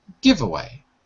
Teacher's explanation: The stress is actually on the first word.